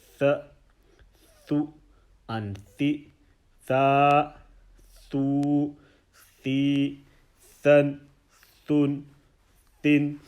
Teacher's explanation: Letter tha, pronounced when the tip of the tongue touches the edge of the upper front two teeth, central incisors. So you have the tip of your tongue, and what will happen is it will actually kind of sort of hang over.